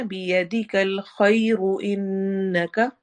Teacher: तो रॉ मोटी पड़ी जाएगी क्योंकि रॉ के ऊपर दम आ रही है। लेकिन अगर आपने स्टॉप किया है, रॉ साकिन है, तो उससे पहले फिर हम देखेंगे, अगर या साकिन आ रहा है तो हम उसको बारीक पढ़ेंगे।